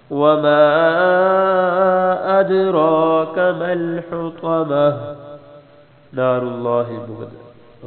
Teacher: لفظ اللہ کی لام موٹی ہوگی